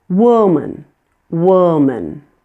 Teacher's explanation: You should hear a shorter, quieter sound as the schwa.